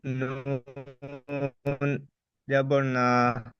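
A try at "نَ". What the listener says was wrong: নুন জবর না টান দিচ্ছেন কেন নুন জবর না একদম টান হবে না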